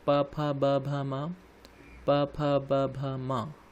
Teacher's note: ओष्ठ से प वर्ग का उच्चारण किया जाता है